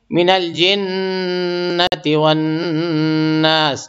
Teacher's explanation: تھوڑا تھوڑا دونوں جگہ جو ہے غنہ کریں گے، دونوں جگہ نون ہے